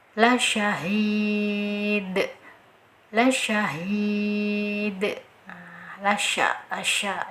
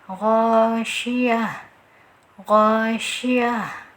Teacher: harus ada angin yang mengalir deras ya, yang tersebar luas di mulut kita ketika pengucapan huruf shin